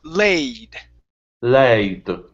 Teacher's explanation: you're starting off with an ah, go right to an a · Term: AE sound